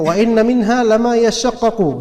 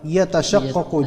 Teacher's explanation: Di sini ada idgham terhadap ta, dimasukkan taknya.